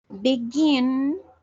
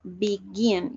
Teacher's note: Begin, la acentuación es al final.